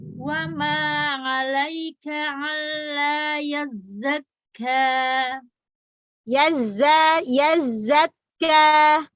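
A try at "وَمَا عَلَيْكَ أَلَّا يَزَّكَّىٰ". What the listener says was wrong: Wa ma 'alaika bukan wa ma 'alaika bukan alla tapi alla hamzah tegas. Alla. Wa ma Kak Sina bukan wamma, wa ma ringan. Wa ma. Bukan wa ma 'alaika alla. Hamzah terang. Alla.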